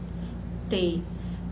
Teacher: Você pronuncia a língua tocando nos dentes incisivos, por isso que ela é chamada de dental